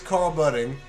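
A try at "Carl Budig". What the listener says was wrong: No N. B-U-D-D-I-G.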